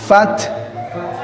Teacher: gigi seri atas bertemu dengan bibir bawah